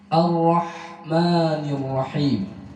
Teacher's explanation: tetap ra bertasydid, getarannya 1 tapi disamarkan